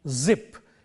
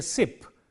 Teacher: when we say zip the sound is voiced when we say sip the sound is voiceless and just by changing the voiceless Ness to voice are voicing